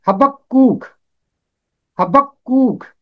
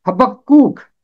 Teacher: اس کا تلفظ ہے حبقوق، حبقوق۔ یہاں کاف کے اوپر تشدید ہے اور پھر اس پر پیش ہے، کاف یہاں 2 دفعہ ہوگا۔